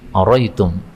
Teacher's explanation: ini hamzahnya bisa dihilangkan satu menjadi araitum